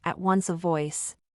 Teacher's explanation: not identical but very close sounds, [v] and [w], are used in two adjacent words